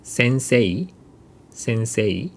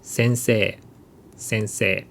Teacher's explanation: this I sound becomes long e sound